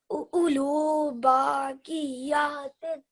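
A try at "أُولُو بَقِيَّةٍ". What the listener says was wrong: Okay, just make this ba a little bit shorter. Ulu baqiyatin.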